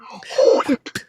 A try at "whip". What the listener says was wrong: Why do you pronounce the H so hard? Whip.